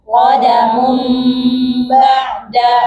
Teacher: Ah, di Al-Qur'an di atas nunnya atau di atas tanwinnya ada mim kecil. Nah, itu diganti nunnya pakai mim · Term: iqlab